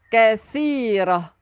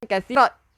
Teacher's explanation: Tak marbutah. Bila kita berhenti bunyi ha. Bukan bunyi ta.